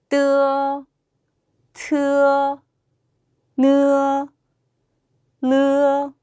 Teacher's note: 다음으로는 우리 혀끝과 이 소리 한번 살펴보도록 하겠습니다. 혀끝을 윗니 뒤에 붙였다가 떨어뜨리면서 나는 소리거든요.